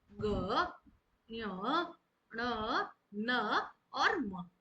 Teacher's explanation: Means जब हम इनका उच्चारण करते हैं ना, तो जो वायु है वो मुख से ना निकलकर नाक से निकलती है, उन्हें नासिक के व्यंजन कहते हैं।